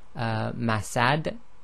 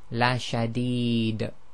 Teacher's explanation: the noon sakin is not pronounced, the dal is actually recited as sakin